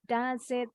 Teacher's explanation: huruf S-nya nyambung ke bunyi I.